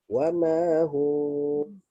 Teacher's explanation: Wa ma hum, dan cuba dengar betul-betul, mesti ada bunyi waw keluar. Okay, kerana bibir dengan bibir yang tidak rapat, okay, ada ruang antara bibir, itu adalah makhraj huruf waw